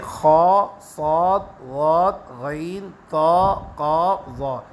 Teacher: یہ 7 کے 7 حروف پر کر کے موٹا کر کے منہ کو بھر کر پڑھیں گے۔ اس میں جو ہے احتیاط یہ کرنا ہے، خیال یہ رکھنا ہے آپ نے کہ آپ کے ہونٹ اس کے ادا کرتے ہوئے گول نہ ہو۔